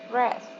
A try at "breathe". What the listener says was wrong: So breath is a noun, and we pronounce breathe as a verb. It's different pronunciation. Breathe.